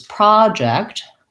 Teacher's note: project that letter o says the clear vowel ah